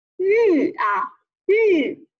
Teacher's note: 小吁戴的是四声的帽子，向下降